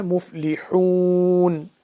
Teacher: اس ہا کو صحیح طرح سے حلقے درمیانی حصے سے ادا کرنا ہے